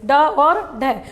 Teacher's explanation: जीभ क्या होती है? पीछे मूर्धा से टकराती है और उनको बाहर की ओर फेंक देती है। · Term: उत्क्षिप्त